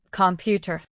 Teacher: Computer stress on the second syllable, computer. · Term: Word stress